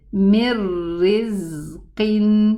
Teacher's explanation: We have a Noon Sukun after it, the letter Ra, and there is no ghunna. · But here it did not leave its ghunna behind. So it's a total merging into the letter ra.